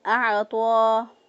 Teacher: عین کو وسط حلق سے ادا کیا